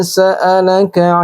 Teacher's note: Dibaca panjangnya dua harokat atau dua ketukan. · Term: mad tabi'i